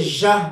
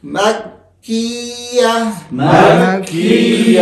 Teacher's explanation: یہ اوپر نیچے کے جو داڑ ہے نا، موٹے دانت، یہ آپس میں مل جائیں گے تو ژ بنے گا، اور اگر یہ آپس میں نہیں ملیں گے، فاصلہ ہوگا تو پھر صحیح پڑھ جائے گا